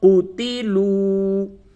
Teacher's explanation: قاف پیش قو، تا زیر تی، لام واو پیش لو، قوتیلو، واو ساکن سے قبل پیش ہے، یہ واو مدہ ہے، اس کو تھوڑا سے کھینچیں گے،